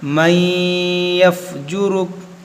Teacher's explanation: یہاں پر دیکھیں نون ساکن کے بعد یا ہے تو یہاں پر ادغام ہوگا